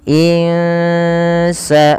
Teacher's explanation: cara membaca ikhfa yaitu menyamarkan suara Nun kepada huruf Sin jadi tidak lagi suara nunnya dibaca dengan jelas suara n-nya yang · tidak lagi dibaca dengan jelas suara nunnya sehingga terdengar bunyi Eng gitu ya ins sambil ditahan dua harakat kemudian Pal Ada Fath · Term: bacaan Ikhfa